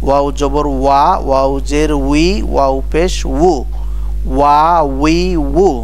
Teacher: দুই ঠোঁট ফাঁক করে মাঝখানে সামান্য একটু গোল করে উচ্চারণ করতে হয় ওয়াও